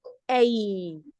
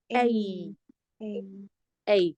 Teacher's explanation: there are two sounds here. You have e and I together. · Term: diphthong